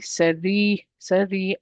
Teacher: I just stretch the ya that's preceded by a kasra · I'm just pronouncing the ra and I'm stretching it because of the ya. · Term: mud letters